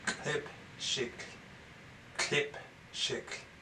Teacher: Notice the glottal barred lambda at the beginning of klip shik.